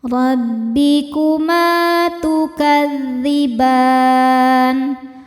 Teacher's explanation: fathah cara bacanya ditebalkan robbi kuma ma mad thabi'i dzahiri sebab ada alif didahului fathah maka mim nya panjang dua harakat